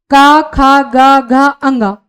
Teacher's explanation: इनका उच्चारण जो होता है आपके कंठ से होता है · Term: क वर्ग